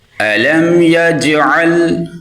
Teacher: میم پہ اظہار کریں گے، جیم پہ قلقلہ کریں گے